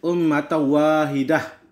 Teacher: idgham bighunah, dibaca memasukkan huruf tanwin ke dalam huruf waw dengan dengung